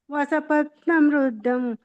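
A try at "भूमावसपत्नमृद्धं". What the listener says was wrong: ನೀವು ಹೇಳೋದಾದ್ರೆ ಭೂಮೌ ಅಂತ ಹೇಳಿ ಭೂಮೌ ಅಸಪತ್ನ ವೃದ್ದಂ ಅಂತ ಹೇಳಬೇಕು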